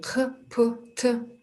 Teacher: Катан глухие. Здесь произношение больше шипения